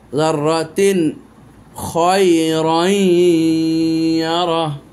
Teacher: इजहार कर दिया है तनवीन को, क्योंकि उसके बाद आ गया खा, हर्फ इजहार।